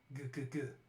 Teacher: Back of the mouth, full stop, a voiced velar stop.